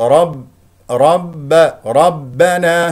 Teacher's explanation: والباء شديده مجهور لا تخرج معها هواء ولا صوت